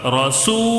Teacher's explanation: رسو تھوڑا سا کھینچ کر پڑھیں گے مد کو، ایک الف کے برابر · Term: واوے مدہ